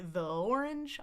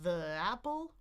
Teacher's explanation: I say uh and then I glide that together with the next vowel that's happening, too. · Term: gliding